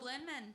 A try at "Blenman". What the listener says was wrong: Blenman. Oh, yeah, because you said the bling without the G.